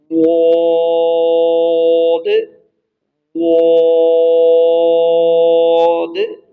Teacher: دال والی آواز کو موٹا کر دیں گے، ہلکی سی چینجنگ آتی ہے اور موٹا کر دیا جاتا ہے۔